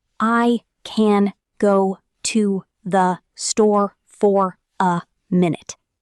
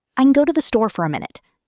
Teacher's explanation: But a native speaker only stresses go, store, and minute. Watch how the rest shrinks. · Notice how can becomes n, to the becomes th, and fora becomes fura.